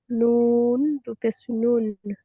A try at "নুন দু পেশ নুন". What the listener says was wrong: সুন্দর।